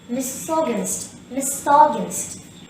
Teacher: the third syllable contains a schwa